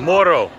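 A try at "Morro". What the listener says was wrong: Roll your R's.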